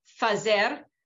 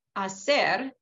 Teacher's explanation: But some examples of archaic features in Ladino are word initial F that stems from Latin, like fazer versus hacer. That F became an H and then disappeared in Spanish in general